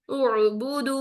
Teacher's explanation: 1 count हमजा की हरकत अदा करें, आइन साकिन में फौरन चले जाएं